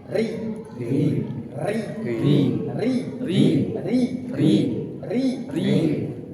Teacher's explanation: kalau dia tipis kasrah getaran ujung lidahnya lebih dari dua